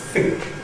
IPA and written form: fɪŋk (think)